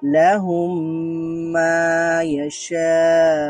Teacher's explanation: ম সাউন্ডের পরে যে আরেকটা ম সাউন্ড থাকে, তাহলে দুইটা ম সাউন্ডকে একসাথে মিলিয়ে ইদগাম করে ফেলবো, আর ইদগাম মানেই হচ্ছে মিলিয়ে পড়া।